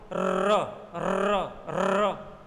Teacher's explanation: बोला एक बार, लेकिन बहुत सारे र लुढ़कते लुढ़कते बाहर निकले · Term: लुंठित व्यंजन